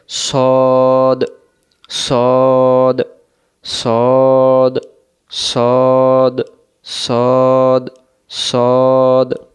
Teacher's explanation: সদক্ষর সামনের নিচের দাঁতের আগা থেকে শীর্ষসহ মোটা করে পড়তে হয় · সদ অক্ষরটা মোটা হয়, মোটা একটু বুঝাই দিই, গুরুত্ব সহকারে বুঝবেন। সদ অক্ষর সামনের নিচের দাঁতের আগা থেকে শীষ সহ মোটা করে পড়তে হয়, অর্থাৎ জবরে আকার পড়া যাবে না।